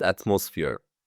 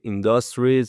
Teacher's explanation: words atmosphere and industry, in both of which the first syllable is stressed